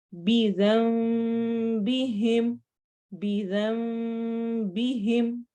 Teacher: यहाँ पर नून की बजाय हम मीम पढ़ेंगे और हमारे होंठ बिल्कुल 100% बंद नहीं होंगे, हल्की सी स्पेस रहेगी, ना ज्यादा ही हमने इसको खुला रखना है.